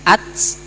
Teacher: huruf ta itu mempunyai sifat lazimah hamas ya, berdesis atau napas berhembus. Nah, jadi sifat lazimah itu tidak boleh dihilangkan dalam keadaan apapun ya.